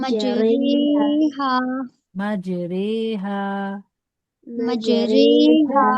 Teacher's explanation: اور اس میں را کو رے پڑھتے ہیں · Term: امالا